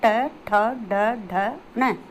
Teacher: मूर्धन्य जो कि कठोर तालु के अगले भाग से बोला जाता है, यानी मूर्धा से ये बोला जाता है, ट ठ ड ढ न।